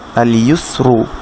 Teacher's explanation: মনে রাখবেন এটা ইয়ার উপরে যখনই দম্মা হবে বা উ সাইনটা হবে তখন হচ্ছে ইউ হয়ে যাবে, আল ইউসরু, আল ইউসরু। ইউস সিনটা চিকন, রুটা মোটা